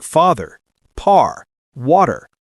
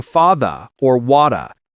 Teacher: We roll that R with the tongue curled slightly back. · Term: final R sound